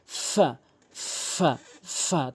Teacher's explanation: এরপর আসুন ফা ও নিচের ঠোঁটের পেট। উপরের দাঁতগুলো নিচের ঠোঁটের পেট এভাবে রেখে উচ্চারণ করতে।